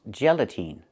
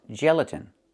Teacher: The last syllable, the last vowel is not the long e like green beans. It's a short I like this is. It's more open. Not e but I gelatin.